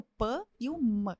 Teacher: As bilabiais, elas surgem primeiro. Quando eu chamo bilabiais, lábio com lábio.